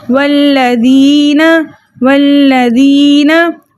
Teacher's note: दाल को हम बारीक पढ़ेंगे, नरमी से पढ़ेंगे, ठीक है, इसको ज़ा नहीं पढ़ना